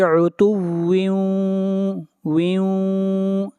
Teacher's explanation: یہاں پر تنوین کے بعد اگلا حرف واو ہے، اور واو حروف یرملون میں سے ہے، اس لیے یہاں پر ادغام مع الغنہ کریں گے